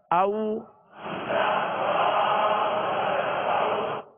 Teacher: تو یہ واو لین کا قاعدہ ہے، اس کو بغیر کھینچے بغیر جھٹکا دیے نرمی کے ساتھ معروف پڑھیں گے